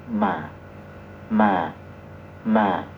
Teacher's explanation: Ma juga sama cukup dipertemukan dua bibir kemudian kita dorong pakai napas